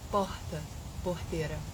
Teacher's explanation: eu preciso de um R lá no fundo da garganta